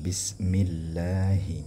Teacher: kalimat lamnya itu ditipiskan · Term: muraqqaq